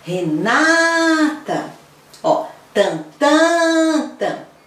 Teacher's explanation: O tan mais compridão é a sílaba tônica